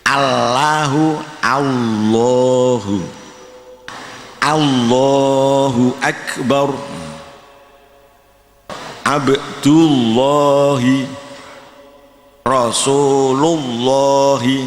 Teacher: Jadi pertama-tama, kita harus memastikan lidah menyentuh gusi . Bunyinya menebal seolah-olah membaca huruf waw, tetapi lidah menyentuh [gusi ].